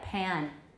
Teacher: Man, the whole thing is nasaled, man, making the vowel fully nasalized. Even if the first consonant is not a nasal, like pan, I start nasalizing very early.